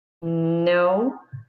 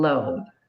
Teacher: One is through the nose, the other is over the sides of the tongue.